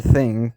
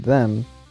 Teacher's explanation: the word thing compared to in the word them is that in the word thing the dental fricative is voiceless and them it's voiced